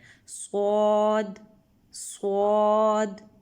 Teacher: سین، صاد اور زا کا جو مخرج ہے یعنی نکلنے کی جو جگہ ہے وہ ایک ہی ہے، لیکن سین کو ہم دونوں دانتوں کے درمیان سے ادا کرتے ہیں اور سیٹی کی آواز نکلتی ہے اور اس کو باریک پڑھا جاتا ہے، سین سین، جبکہ صاد میں پورا منہ بھر کے یعنی آواز منہ سے نکلتی ہے اور اس کو موٹا پڑھا جاتا ہے، صاد صاد، ٹھیک ہے۔